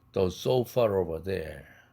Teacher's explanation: The sofa over there에서도 저기에 있는 소파 할 때 so far over 이것도 모음과 모음이 연결되니까 불편해서 R을 집어넣습니다. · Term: intrusive R